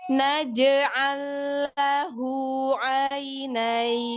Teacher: Yang ada kolkola huruf jim sukunnya